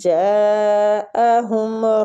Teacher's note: جاء جیم پہ جو مد ہے نا، اس مد کو مد واجب متصل بولتے ہیں۔ اس مد کا نام مد واجب متصل ہے اور ہم اس کو کھینچیں گے تقریباً 4 حرکات · جاءہم رسول من، نون کا اظہار کریں گے، آگے والی نون کو ہم اخفا کے ساتھ پڑھیں گے